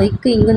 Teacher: நாவினோட முதல் பகுதி அன்னத்தோட மேல் அடிப்பகுதி அடிப்பகுதி வந்து பொருந்தது